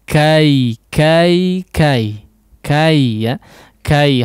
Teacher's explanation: sempurnakan fathah huruf kafnya terlebih dahulu, kemudian mudahkan pengucapan ya sukunnya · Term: huruf lin